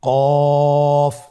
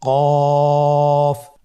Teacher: কফ উচ্চারণের ক্ষেত্রে অবশ্যই তিন আলিফ টেনে পড়তে হবে